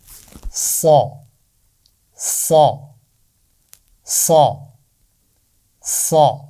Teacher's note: اس کی آواز کے لیے ہم اس پر لگائیں گے ایک چھوٹا سا کیپ، اور اس کی آواز ہم پڑھیں گے سا سا سا سا، موٹی آواز سا۔ اور اس کی آواز کے شروع میں تھوڑی سی سیٹی بھی سنائی دے رہی ہے